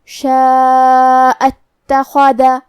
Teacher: کلمت اتخذ کے شروعات میں یہاں الف ہے لیکن یہ حمزۃ وصل ہے اور ہم حمزہ کو ظاہر نہیں کریں گے تو کلمت شاء کے بعد حرف التا پڑھیں گے، شاء اتخذ۔ · کلمت فمن کے آخری میں نون ساکن ہے، پھر حرف الشین ہے، یہاں بھی حکم ہے اخفاء تو ہمیں یہ حکم کو غنہ کے ساتھ ادا کرنا ہے، فمن شاء۔ کلمت شاء میں مد ہے، یہ مد واجب متصل ہے تو ہم اپنی آواز 4 مد کے برابر لمبی کریں گے